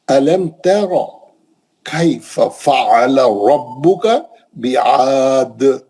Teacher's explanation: रा को मोटा पढ़ेंगे, डायरेक्ट जबर है